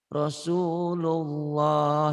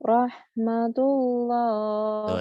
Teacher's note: Lafaz Allah dibaca tabkhim, tebel, tebal, berbunyi O, Allah seperti bunyi O. Bila didahului oleh huruf yang berbaris fathah atau domah.